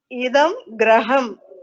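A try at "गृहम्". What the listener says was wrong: You should not pronounce it as Graham. It is Griham.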